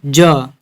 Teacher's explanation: ज हमारा घोष वर्ण है।